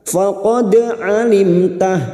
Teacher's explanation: mim sukun bertemu ta idhar safawi. Mim sukun dibaca jelas tanpa mendengung